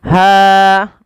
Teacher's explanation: ha mad thobi'i panjangkan dua harakat fathah bertemu alif